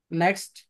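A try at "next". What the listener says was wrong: শুধু টি বলার প্রয়োজন নাই। ট সাউন্ড এটা আসে না।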